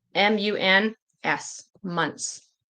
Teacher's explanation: sometimes when there's three consonants, the middle one we just won't really pronounce.